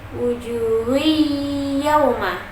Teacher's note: Di situ ada huruf ha yang berharokat dhammah tanwin bertemu dengan ya bertasdid, dibaca dengung karena hukumnya di sini idgham bihuna, jadi dibacanya dengung.